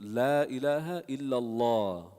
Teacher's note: That lam is heavy, right? The tongue is raised.